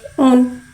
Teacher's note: हमज़ा के बाद पेश कोटों की गुलाई के साथ अदा करके पढ़ेंगे।